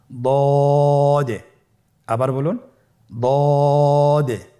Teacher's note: দদ হারাফটি উচ্চারণ করার সময় অবশ্যই তিন আলিফ টেনে পড়তে হবে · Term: মোটা হরফ, 3 আলিফ টেনে